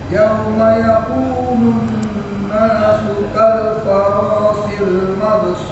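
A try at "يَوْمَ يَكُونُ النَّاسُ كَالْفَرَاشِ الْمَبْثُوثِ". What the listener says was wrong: Sa. Mabthus. Mabthus. Ya, jadi sa-nya sa ya, ujung lidah ke 2 gigi seri.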